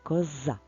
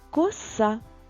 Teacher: в слові коза звук з дзвінкий а в слові коса звук с глухий